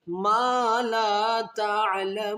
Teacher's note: माँ को अलिफ की मिक़दार खींचेंगे, फिर लाम को भी अलिफ की मिक़दार, क्योंकि अलिफ से पहले ज़बर है, اور اس الف سے پہلے بھی زبر ہے، یہ دونوں الف مدہ ہیں، تو الف مدہ کو ایک الف کی مقدار کھینچتے ہوئے آگے آیات کو مکمل کریں گے.